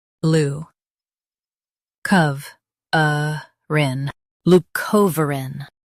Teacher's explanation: Stress co and keep uh light.